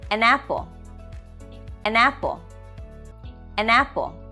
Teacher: the n in an gets joined with the a sound in apple and it becomes almost like a single word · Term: catenation or linking